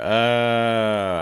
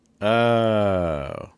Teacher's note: to make sure that the air comes through and that again the intonation is going to drop and then you can hear it kind of just go down